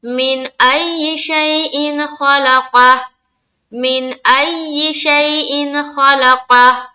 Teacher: قاف کو بھی منہ بھر کر بولنا ہے. یہ موٹے حروف میں سے ہے، اسی لیے اس کو بولڈ پڑھنا ہے